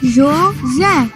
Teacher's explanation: A última sílaba é a mais forte. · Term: sílaba tônica